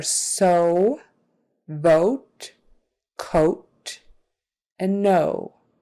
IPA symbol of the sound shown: oʊ